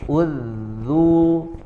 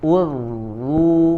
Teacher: menebalkan suara adalah diangkat pangkal, bagian pangkal lidahnya ke langit-langit, kemudian suaranya juga diarahkan ke langit-langit.